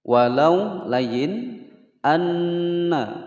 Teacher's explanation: ada Nun bertasydid ditekan dan ditahan selama dua ketukan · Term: ghunnah musyaddadah